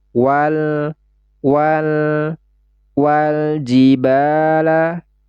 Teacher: Maka nama hukumnya adalah alif lam qamariyah atau izhar qamariyah. Suara lam sukunnya ini harus kita baca dengan jelas.